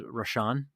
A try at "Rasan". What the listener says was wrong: no R rasan not rashan